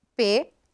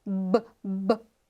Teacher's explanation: Mais uma é não vozeada. P. E a outra é vozeada.